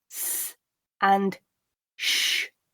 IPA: s and ʃ